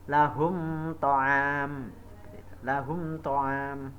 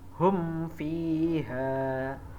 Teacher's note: mim mati tersebut dibaca terang atau jelas. Ingat, izhar syafawi yaitu apabila mim mati bertemu huruf selain mim dan ba.